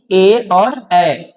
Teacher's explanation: इन्हें बोलने के लिए कंठ और तालु दोनों का उपयोग करना पड़ता है। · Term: कंठ तालव्य